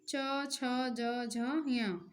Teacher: तो इसमें हम जब बोलते हैं तो जीवा तालु पर लगती है, तो ये तालु उच्चारण स्थान के हैं। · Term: चा वर्ग